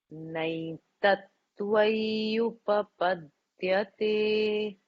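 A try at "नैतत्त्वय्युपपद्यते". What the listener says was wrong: Naitattvayupa. The ya a little more.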